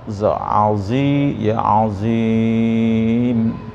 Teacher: Za-nya penuh mulutnya, punggung lidahnya ada di langit-langit mulut ya, di atas. Za azi ya, azim gitu ya, bukan ajim ya, tapi za zi.